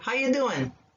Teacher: we drop the g and we make the u a ya